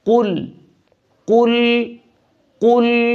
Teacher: یہ باریک قاف نہیں، یہ موٹا قاف ہے، اس کو قل پڑھنا ہے.